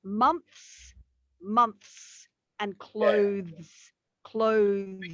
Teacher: you've got the th and immediately you've got the s straight after so your tongue has to do a lot of work to